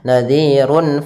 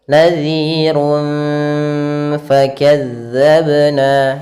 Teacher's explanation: samarkan ke Fa langsung kepada makhrajnya yaitu gigi atas menempel dengan gigi bawah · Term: ikhfa Hakiki